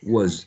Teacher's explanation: The last consonant sound is a voiced z